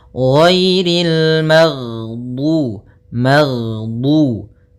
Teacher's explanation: Jahr yaitu tertahannya nafas kita. Jadi ketika melafalkan ghain, nafas kita tertahan, suara kita dialirkan.